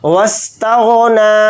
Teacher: واو کو سین کے ساتھ ملا کر پڑھیں گے، یہ الف نہیں پڑھا جائے گا